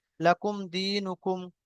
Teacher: এখানে মিম সাকিন তারপরে ওয়াও এসেছে তো ইজহারে শাফাবি বিনা গুন্নায় তাড়াতাড়ি পড়তে হবে